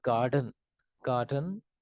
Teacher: take the word garden garden it has two syllable gar done so the stress is on the first syllable gar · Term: word stress